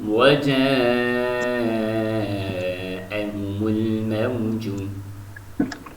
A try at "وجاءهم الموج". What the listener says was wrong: Mad complete, more long. وجاءهم الموج more long.